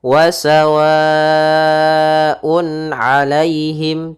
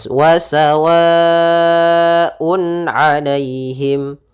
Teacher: yaitu apabila terjadi adanya adanya tanwin atau nun sukun bertemu dengan huruf halq, yaitu ada huruf hamzah, ha, ain, ha, ghain, kha, maka suara tanwinnya atau suara nun sukunnya harus dibaca dengan jelas. Maka di sini wasawaun alaihim tanpa adanya tahanan di gunnahnya atau tidak menahan gunnah, tapi jelas saja wasawaun alaihim. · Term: izhar halqi